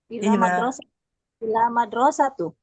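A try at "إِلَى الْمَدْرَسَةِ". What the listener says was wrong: Kasrah kan jangan lupa.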